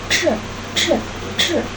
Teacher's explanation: Terdapat aliran udara yang kuat keluar dari rongga mulut sehingga menghasilkan bunyi aspirasi.